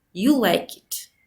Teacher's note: Statements also used with the low rising tone when they're intended as questions.